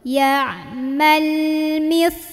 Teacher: sa-nya ujung lidah gigit. Mis, o, pangkal lidah naikin.